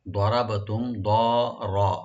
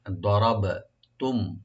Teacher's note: দটাকে এখানে ডিপ হবে, রাও ডিপ হবে এখানে, আর বাতে একটু হালকা ইকু করবেন